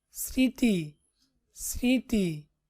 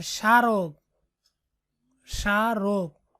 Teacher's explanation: পদের আদ্য ব্যঞ্জন বর্ণে ম ফলা সংযুক্ত হলে সাধারণত তার কোনো উচ্চারণ হয় না, তবে প্রমিত উচ্চারণে ম ফলা যুক্ত বর্ণটি সামান্য নাসিক্য প্রভাবিত হয়ে ওঠে।